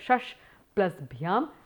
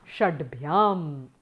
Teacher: The shakara tends to become the dakara